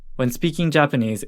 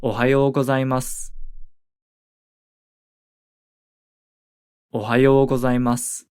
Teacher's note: You might notice that we don't really pronounce the final U vowel sound at the end of Ohayou gozaimasu